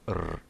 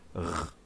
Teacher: Some Western clans may pronounce this like R, Scottish R, while others may pronounce it as R, a French R, though it's never pronounced as a soft R, the American R.